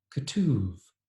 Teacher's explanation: combine the schwa or the muttered vowel after the k and a u vowel after the t